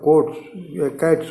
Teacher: अब दूसरा शब्द कैट है, तो कैट भी जो है टा जो है अघोष है, तो कैट में एस जुड़ेगा तो कोट्स कैट्स हो जाएगा, सा बनाएगा